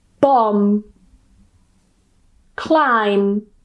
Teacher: Typically, whenever you get the spelling M and B, normally at the end of a word, although I am going to talk about one word where it's in the middle, the B at the end is silent and we just pronounce the M. So, we just pronounce m and that's it. · the B at the end is silent and we just pronounce the M. So we just pronounce and that's it. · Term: silent B